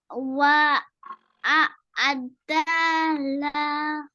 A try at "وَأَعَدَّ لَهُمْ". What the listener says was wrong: Don't stretch fatha. وأعد لهم وأعد لهم. Don't stretch fatha. Don't stretch fatha. وأعد لهم. Say fast.